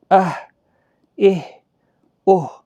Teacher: یہ سانس کو چھوڑتے ہوئے اب وسط حلق والا ہا ہے